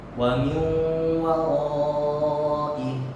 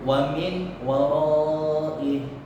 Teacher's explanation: Mesti dimasukkan suara nun mati itu dengan waw. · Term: idgham bi gunnah